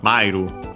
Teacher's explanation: notice that the accent I mentioned is on the ma, the first mora, mairu. Not typical of verbs.